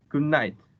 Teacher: in goodnight the plosive da becomes nasal na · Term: regressive